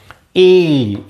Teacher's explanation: ई म्हणताना जीभ बघा वर लागते टाळूला आणि उच्चार होतो. ई टाळूला न लागता जीभ ईचा उच्चार आपण करू शकत नाही म्हणजे ह्या कुठल्याही अक्षरांचा उच्चार करू शकत नाही म्हणून त्यांना तालव्य वर्ण म्हणतात.